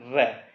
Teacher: जीभ एक बार जो दंतमूल है मसूड़े होते हैं वहां से रगड़ खाती है बोलते समय र, इस प्रकार से तो रगड़ खाती है, वहां उनको दंतमूल या वर्चे ध्वनिया कहा जाता है। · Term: लुंठित